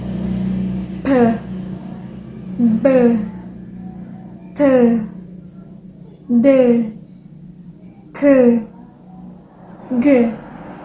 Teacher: plosive or stop, produced by total blocking of the airflows, then follows by a sudden air released. So it's like when you want to pronounce consonant, it's like explodes, and just at one moment it's like stop.